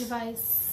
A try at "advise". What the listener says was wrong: Good, and now advise. More vibration, please. Advise.